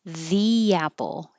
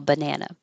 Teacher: If the next word begins with a vowel, then it sounds like E. If the next word begins with a consonant, the banana.